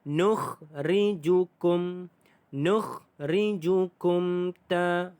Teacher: Hukum tajwidnya adalah satu sahaja, mim mati bertemu dengan ta, izhar syafawi, tidak ada dengung dan kita baca dengan jelas.